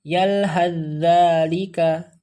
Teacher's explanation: Jadi kita langsung ke huruf za saja, ya. Tidak membaca sa-nya. Jangan yalhadzalika.